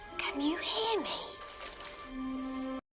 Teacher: Harry believes the snake can hear him so he uses an insistent fall